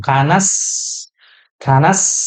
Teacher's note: huruf sinnya jangan lupa ya, ada hamsnya, ada udara yang mengalir dan juga rokhwah. Makanya dia panjang tuh. · ada desisannya, ada sifat sofir